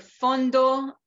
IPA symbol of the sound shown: f